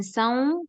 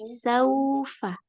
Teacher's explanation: Tapi wawunya tidak masuk hidung